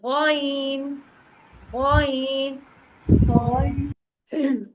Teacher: ये दोनों हरूफ हलक के ऊपर वाले हिस्से से अदा होते हैं। जबान के पिछले हिस्से को ऊपर की तरफ बुलंद करते हैं। यानी जबान का जो पिछला हिस्सा है उसको ऊपर की तरफ बुलंद करना है। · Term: इब्तदा हलक